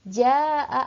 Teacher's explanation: panjangnya dua Alif berarti empat harokah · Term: mad wajib muttasil